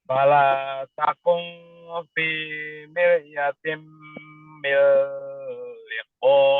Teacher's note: ikhfa tuh kunnya. Kun diikhfakan tuh samar tuh